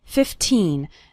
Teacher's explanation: remember to pronounce the second syllable of 15 nice and strong 15 not like 50 which is a different number 15 minutes